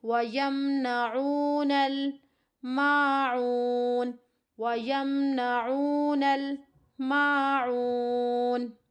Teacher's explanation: 3 الف کی مقدار کے برابر کھینچتے ہوئے یہاں پر وقف کرنا ہے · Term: مد عارض